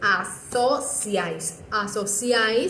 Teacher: Que primero quedó una vocal cerrada, luego quedó una vocal abierta y luego quedó otra cerrada · Asociáis se divide en 3 sílabas. En la última sílaba nos podemos dar cuenta que quedaron 3 vocales juntas dentro de esa sílaba. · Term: triptongo